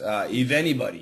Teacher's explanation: most Americans would say an F sound, but some people might use kind of a V sound